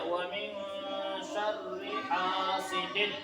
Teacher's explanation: الف سے پہلے زبر ہو تو کیا ہوتا ہے؟ الف مدہ، تو اس کو ایک الف کے برابر کھینچ کر پڑھیں گے